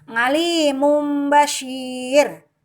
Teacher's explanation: itu diganti dengan suara mim itu maksud mengubah bunyi ngalimun bachir suara tanwinnya dirubah menjadi suara mim saat bertemu dengan bah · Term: iqlab